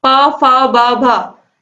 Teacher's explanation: इन सभी का उच्चारण आप जब इनको बोलोगे तो आप देखोगे आपके दोनों ओठों का यूज हो रहा है इसमें, तो इसीलिए इनका उच्चारण स्थान क्या है, ओष्ठ है, प, फ, ब, भ।